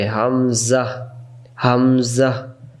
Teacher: হামজা অক্ষর হলকের প্রথম থেকে শক্ত করে পড়তে হয়